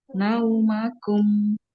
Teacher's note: Jadi u ya. Jadi jangan menyerempet ke o. Naumakum. Jadi u ya. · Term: harfulin